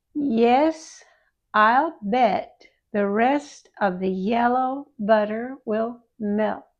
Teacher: Short E is slightly more open than long E and not as wide.